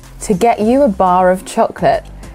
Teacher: the following words begin with vowel sounds, so we are using the R sound there, the linking R